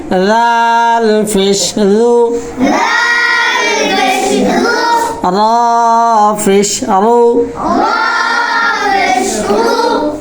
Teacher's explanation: জিব্বার আগার সামনের উপরে দুই দাঁতের আগার সঙ্গে লাগে।